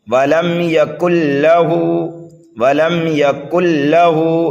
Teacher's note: لام کو 2 بار پڑھیں گے، ایک مرتبہ پیچھے والے کاف سے ملا کر اور دوسری مرتبہ اپنے حرکت کے مطابق، اور ہا کو جو ہے ہم ایک الف کے برابر کھینچ کر کے پڑھیں گے اس لیے کہ یہ الٹا پیش ہے ہا کے اوپر، اور الٹا پیش جو ہے واو مدہ کے قائم مقام ہوتا ہے کھینچ کر پڑھنے میں۔